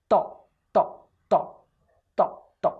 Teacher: Ta is dental, ma is labial, see, lips are closed, ma, and ta, you have to touch the frontal two teeth, almost four, with the tip of the tongue